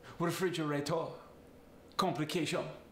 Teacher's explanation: Another thing I love about the Italian accent, a lot of times the R just fades away at the end of the word. For instance, refrigerator and complication become refrigerator, complication.